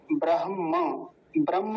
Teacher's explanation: ब्रह्म शब्द को मैंने बहुत बार बताया कक्षा में। ब्रह्म, ब्रह्म ह नहीं बोलेंगे, ब्रह्म, ह पहले म बाद में। ब्रह्मण, ब्रह्मणस, ब्रह्मणस, स तक ले जाएंगे।